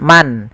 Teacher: izhar itu suara nunnya jelas Suara nnya jelas misalkan Man kalau suara idgham idgham itu berarti